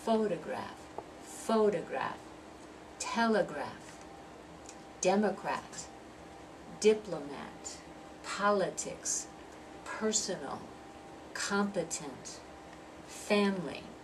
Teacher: stress that first syllable is longer louder and clearer